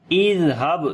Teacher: زال کو نرم پڑھیں گے، اس کے اوپر صفت رخاوت ہوگی، یعنی کہ آواز کو جاری کر کے پڑھیں گے اور نرمی آئے گی. با کے اوپر قلقلہ کریں گے، کمزور قلقلہ ہوگا، لام کو لمبا کریں گے، کھڑی زبر ہے اس کے اوپر.